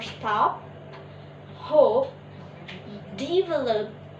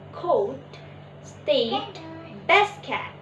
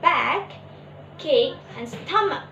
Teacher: Unreleased: when p, t, or k sounds comes at the end of a word, it is often unreleased. We start to say the sound by blocking off the airflow in our mouth, but we don't release the air. We add a small circle to the phonemic symbol to represent this sound.